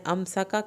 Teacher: کاف کی زبر کو لمبا نہیں کرنا، را کو پر نہیں کرنا، را کو پتلا پڑھنا ہے